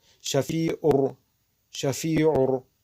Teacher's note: нун дар дохили ро медарояд. беғна яъне ошкор мекунем роро. ҳарфи ро ошкор хонда мешавад. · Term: идғоми беғна